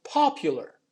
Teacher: the stress is on the first syllable we still have that ye sound after the p and between the p and the u